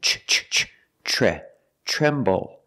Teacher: The TR together makes a ch sound like chicken